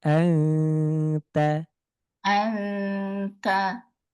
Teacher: Huruf ta betul punya sifat hams. Tapi ketika dia berharakat dia tidak boleh berlebihan sifat hamsnya.